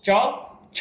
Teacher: ની અંદર હવા વધારે છે અહીંયા ચેક કરો ચ છ છ તો એમાં પણ છ ની અંદર વધારે હવા દેખાશે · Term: મહાપ્રાણ